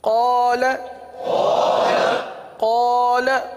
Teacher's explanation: लाम पर भी ज़बर है, लेकिन लाम के साथ अलिफ नहीं है, लाम के साथ हुरूफ़ मद्दा नहीं है, इसलिए लाम को नहीं खींचेंगे। तो पता चला क़ाफ़ को 1 अलिफ तक खींचेंगे, लाम को चूँकि ज़बर है तो ज़बर ज़ेर पेश को बग़ैर खींचे बग़ैर झटका दिए मारूफ पढ़ते हैं। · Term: अलिफ मद्दा